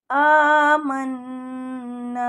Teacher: الَّذِينَ آمَنُوا قالوا آمنا، نون مشدد آ گئی تو غنہ کریں گے، آواز کو ناک میں لے جائیں گے اور تھوڑا سا گنگنا کے پڑھیں گے